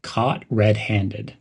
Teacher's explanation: link the words caught and red pronounce them almost as one word caught red-handed emphasize the word red